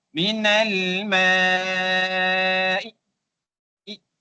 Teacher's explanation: Ambil wajah yang ke empat iaitu empat harakat beserta raum.